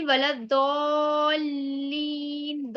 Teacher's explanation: دالین دوات کو لام سے ملائیں گے کیونکہ لام پر تشدید ہے، اور دوات کو کھینچیں گے اس لیے کیونکہ دوات پر مد ہے